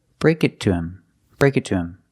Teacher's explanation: not stressed words in a sentence so the H is usually silent